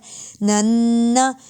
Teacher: اور نون مشدد پر غنہ ہوتا ہے